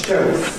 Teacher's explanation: ‘Shelf’ [ʃeɫf] becomes [ʃeof], ‘middle’ [ˈmɪdɫ] becomes [ˈmɪdo]. Notice, you know, you don’t have lateral release any more in [ˈmɪdo], you don’t have a lateral but instead a vowel, [ˈmɪdo].